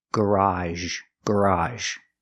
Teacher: it's like the sh sound sh sh but we make a voice SH · The second pronunciation is age in the word garage. It's an open sound, like hot and stop, plus the sound zh.